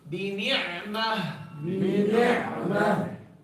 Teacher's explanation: Pay attention to the ayn when it has a sukun. Don't turn that sukun into a fatha or part of a fatha. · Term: Full sukun